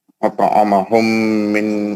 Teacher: अतअमहुम में मीम का गुन्ना है।